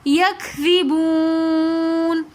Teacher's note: واو مدہ اور اس کے بعد نون ساکن آ رہا ہے تو اس لیے ہم نے اس کو تھوڑا سا کھینچ کر پڑھا